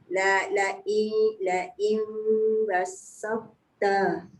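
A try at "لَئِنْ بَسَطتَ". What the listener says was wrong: Tapi bunda jangan tekan basauta, jangan bas. Basauta. Jangan basauta salah tu. Jangan basaut, jangan ketat antara ba dengan sin. Basauta. Boleh mungkin tak perasan sebab nak jaga yang sin dengan ta tu dia jadi tertekan.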